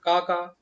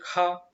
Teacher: महाप्राण में मुख से जो वायु की मात्रा होती है अधिक निकलती है, वायु की मात्रा अधिक निकलती है मुख से।